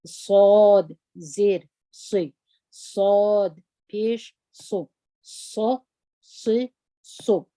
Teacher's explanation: دروند تور دي، د سین پر رقم یې نه وایي